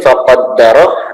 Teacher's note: faqaddara, hati-hati situ ada tasydid ya, jadi harus ditekan